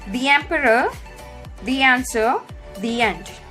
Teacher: I have added little Y sound when I started pronouncing these words. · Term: short Y sound